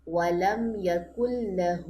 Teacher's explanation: ہو لمبا ہوگا، لام لمبی نہیں ہونی۔ لام کی تشدید کاف کی پیش کو سپورٹ کرے گی، کاف کی پیش سے سپورٹ لے گی۔